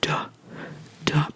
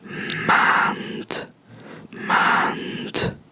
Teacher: all letter D's at the end of Dutch words are pronounced as a T